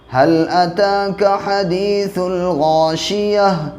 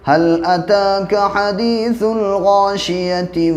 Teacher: تو جب وقف ہوتا ہے تو یہ تا ہا میں بدل جاتا ہے